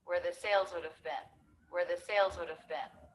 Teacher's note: Notice how bin, spelled with two E's, is actually pronounced with the I as in sit vowel.